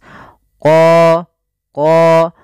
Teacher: dan kemudian pada lafal qo ini ada bacaan Mad thi'i qo untuk huruf q sendiri makhrajnya daripada pangkal lidah kita dengan langit-langit atas